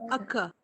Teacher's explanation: It's a schwa sound. Even though the spelling here, the letter is O, it is not occur, but a schwa. Schwa is pronounced as uh.